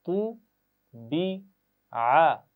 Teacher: پہلی آواز ہے طا کی اور طا کو ہم موٹا پڑھتے ہیں